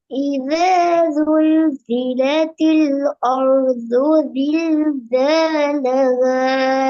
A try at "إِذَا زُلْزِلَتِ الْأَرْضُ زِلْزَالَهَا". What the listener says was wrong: ஆர்து அந்த ஆவை மாத்தணும். அ அர்து அர்து.